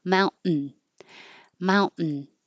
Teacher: instead of releasing t with air flow hold your tongue there and make the N noise